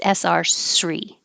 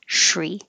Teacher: you can say this, excuse me, with no sh sound or with the sh sound.